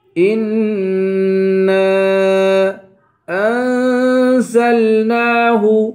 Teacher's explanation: إنا پہ غنہ کریں گے، نون کو ایک الف کے برابر کھینچ کے پڑھیں گے، اور اوپر مد ہے، اس مد کو 3 الف کی مقدار کھینچ کر پڑھیں گے.